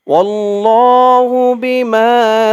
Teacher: এই এক আলিফ টানটা তিন আলিফ টান হয়ে যাবে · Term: মধ্যে আরজি